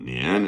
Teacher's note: So it goes down and it doesn't come back up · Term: half third tone